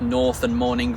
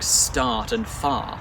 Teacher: the O vowel in words like North and morning merged with the a vowel in words like start and far